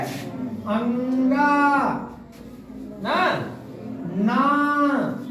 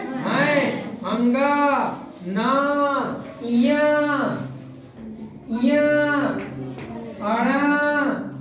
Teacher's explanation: जैसे आ रहा है ना आ उच्चारण स्थान कंठ है लेकिन इन चंद बिंदी लगा दिए तो का हुआ आ तो नाक से भी निकल रहा है ना जैसे अंगा ना [संगीत] बोल तो देखो मुंह से निकल ही रहा है लेकिन हम नासिका का भी प्रयोग कर रहे हैं। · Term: अनुनासिक